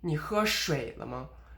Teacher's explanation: The 水 only goes down and it doesn't come back up again.